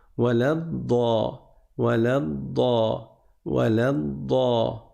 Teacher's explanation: Waladda comme si la personne, elle voulait, je sais pas ce qu'elle voulait faire, mais en fait, tu vas juste rester 2 fois plus longtemps sur la consonne avant de passer à la voyelle. Mais avec douceur. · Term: la shadda